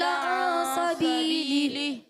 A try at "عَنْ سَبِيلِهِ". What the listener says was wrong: عن سبیلہ. اب بھی یہ غنہ چھوڑ دیا آپ نے، یہ کیا تو دونوں غنّے پورے کرنے، ٹھیک ہے؟